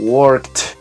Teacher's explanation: si usted al terminar la palabra work suena y no vibra la garganta, esa terminación va a sonar como una T, entonces se dice worked.